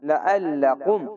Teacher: লাআল্লাকুম, লাম জবর লা, আইন লাম জবর আল, আইনটিকে মোটা করে গলা চিপে পড়বেন